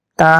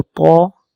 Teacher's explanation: تا کو باریک پڑھیں گے، تو کو موٹا پڑھیں گے، یہ دونوں ملتے جلتے الفاظ ہیں، حروف ہیں۔